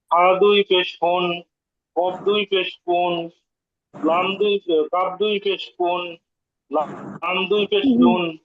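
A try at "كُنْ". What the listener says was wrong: ইয়া ভাই আমাদের আরেকটু গুণা করতে হবে ফুন কুন কুন লুন একটু বেশি গুণা করতে হবে আবার বলেন মাশাআল্লাহ এই দুইটার মধ্যে আরেকটু ব্যবধান করতে হবে আগামী ক্লাস থেকে ঠিক হয়ে যাবে আশা করছি এরপরে বাকি আছেন আমাদের রাজু ভাই আমাদের এই চারটা শোনাবেন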